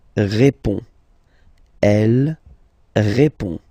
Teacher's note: final D is not pronounced. You will only have this on nasal sound at the end